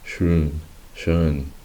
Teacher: Eso quiere decir que la O suena en este caso como una E intermedia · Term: umlaut